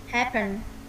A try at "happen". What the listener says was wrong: Chữ E nó mở rộng miệng hơn này. Hap. Hap. Ờ, nghe sang A khá nhiều. Thực ra cái âm này nhá, cái từ này một từ nó là giữa trung âm giữa E và A. Nghe nhá, A, A.